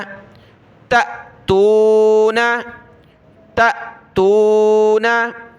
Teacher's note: हमजा साकिन उस पर झटका देकर पढ़ते हैं